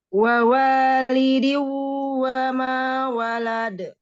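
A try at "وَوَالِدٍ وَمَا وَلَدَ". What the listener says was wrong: Ini hukumnya apa? Tanwin ketemu waw? Idgham? Bigunnah, idgham bigunnah itu ditahan. Kenapa langsung? Lamain kan tingkatan gunnah, punya tingkatan gunnah. Idgham pada nun dan mim itu masuk tingkatan gunnah akmal. Mim dan nun yang idgham itu masuk ke tingkatan gunnah yang pertama, gunnah akmal.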